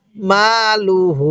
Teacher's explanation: মা লাম পেশ লু হা উল্টা পেশ হু মালুহু স্মরণ রাখবেন লামের মধ্যে কিন্তু টান দিবেন না হা এর মধ্যে এক আলিফ টান দিবেন হা এর উপরে এটা হলো উল্টা পেশ আর লামের উপরে এটা